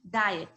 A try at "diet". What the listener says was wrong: Yes, don't forget to pronounce the ending sound. Diet.